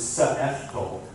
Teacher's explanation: The second sound there is the catch of the throat.